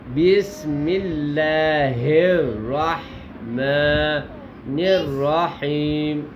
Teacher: لفظ اللہ کا لام باریک ہوگا. یہ اصول ہے کہ لفظ اللہ سے پہلے کسی حرف کے نیچے زیر آ جائے تو اس کا لام باریک پڑا جاتا ہے.